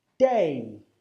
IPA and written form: deɪ (day)